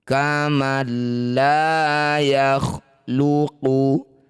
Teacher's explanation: Nun sukun bertemu huruf lam disebut bacaan namanya idgham bila gunnah. Bunyi nun sukunnya langsung masukkan pada lam tanpa dengung.